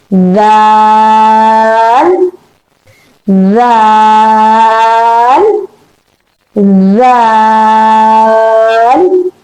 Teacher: point of emission of the letter dal is between the two teeth, the tongue between the two teeth. Okay, but remember this thing that you will not make a vibration in it.